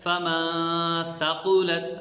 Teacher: یہ نون پر ہم نے اخفاء کیا ہے، آواز کو ناک میں چھپا کر غنہ کیا ہے